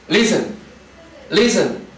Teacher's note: pero ojo, no tiene el acento sobre la última sílaba. Lo tiene sobre la primera